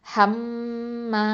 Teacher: மீமில் அக்கமல் குன்னா கொடுக்கணும், நிறுத்தி தான் ஓதணும்